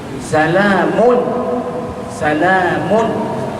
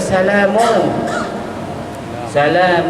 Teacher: hujung lidah kita itu diangkat dan menekan pada gusi gigi hadapan sebelah atas yakni pada makhraj huruf nun maka bacaannya tanpa gunah ataupun tanpa dengung ya iaitu sifat dengung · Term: izhar